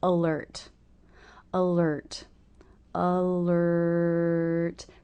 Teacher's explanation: there's no change in sound there from the r as in her vowel symbol to the r consonant symbol R it's all just one sound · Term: r consonant sound